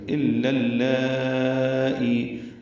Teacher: ای یا مدہ ہے، دو حرکات لمبا کریں گے